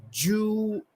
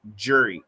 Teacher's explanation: the first one is going to be Jew, like a long double O, and the second one is a schwa R.